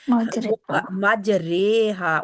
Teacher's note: مجرحا مجریہا، اس رے کو، اس کو کہا جاتا ہے 50%، آدھا آدھا ہوتا ہے، 50% یا ہوتی ہے اور 50% الف ہوتا ہے اس میں. تو اس لیے ہماری وہ بڑی یا بن جاتی، 50% الف 50% یا ملا کر بڑی یا وجود میں آ گئی.